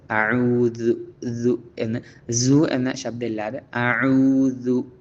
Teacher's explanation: അഊദു ദു എന്നുള്ള അക്ഷരത്തിൻ്റെ മഖ്റജ്, ഉത്ഭവസ്ഥാനം, നാവ് മുകളിലെ പല്ലിൻ്റെ താഴെ ആയിക്കൊണ്ട് വെച്ചുകൊണ്ടാണ് അത് ഉച്ചരിക്കേണ്ടത്.